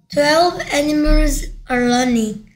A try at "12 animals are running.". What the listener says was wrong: 근데 러닝이 배우고 있는 중이다가 돼버렸네요. 오케이, learning 이렇게 발음하니까 그렇죠. running 이렇게 발음하니까 running, R 발음, R 발음답게